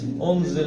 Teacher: ناک سے، زبان تالو کے ساتھ نہ لگے. انزل، زے کو بھی میں نے بتایا سیٹی کی آواز